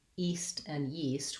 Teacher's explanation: we have the glide for yeast and no glide, just the E for east